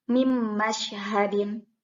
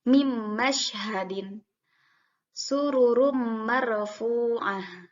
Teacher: Jadi nunnya tidak terbaca, dimasukkan langsung ke huruf selanjutnya. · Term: idgham